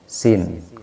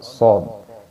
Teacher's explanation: huruf sod ini bedanya sama sin hanya belakangnya atau pangkal lisan kita diangkat. Lidah bagian belakang diangkat ya.